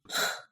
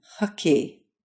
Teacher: bring your tongue up near where you'd say K but instead of touching your soft palate with the back of your tongue just get close to the soft palate